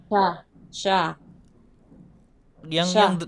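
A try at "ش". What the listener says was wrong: Yang deras dong anginnya. Namanya tafashi kan? Asya, coba.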